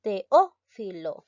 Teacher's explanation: la mayor fuerza de voz recae en la antepenúltima sílaba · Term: esdrújula, sílaba tónica